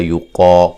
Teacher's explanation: لا الف مدہ ہے، یقا قاف کو موٹا ادا کریں کہ مد اصلی ہے